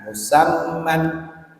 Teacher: Mim tasdidnya didengungkan, mannya diizharkan.